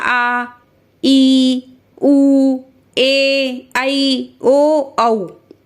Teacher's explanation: ये क्या हो गए आपके दीर्घ स्वर हो गए, यानी 2 मात्रा का समय लग रहा है इसमें। या कह सकते हैं 2 मात्रा की बजाय हम ये भी कह सकते हैं कि देखिए मेरे साथ 1 2 चुटकी का समय लग रहा है, तो क्या हो गया दीर्घ स्वर।